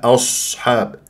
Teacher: هذه الهمزه مرققه ما افخمها لمجاورتها للصاد واقول اصحاب ا او غلط ا اصحاب واعطيها تفخيم مرتبه رابعه